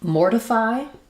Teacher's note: So in mortify, we have first syllable stress. Letters OR do say the OR sound.